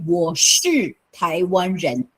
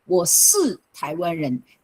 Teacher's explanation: when you hear on the street, you do not hear people saying the retroflex.